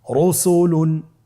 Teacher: রয়ের উপরে পেশ এসেছে, তাহলে র হরফটিকে মোটা করে পড়তে হবে